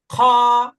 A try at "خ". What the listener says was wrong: এটাকে একটু শক্ত করে বলতে হবে।